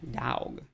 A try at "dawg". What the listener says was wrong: You don't say ow, you say aw. A-W is aw. Not ow. It's spelled D-A-W-G, dog.